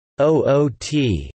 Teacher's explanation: in the traditional accent of Newcastle upon Tyne, 'out' will sound as 'oot'